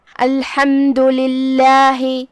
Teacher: یہاں لفظ الجلالہ کا حکم ہے ترقیق، کیونکہ یہاں لام کے نیچے زیر ہے تو ہم اسے پتلی آواز میں پڑھیں گے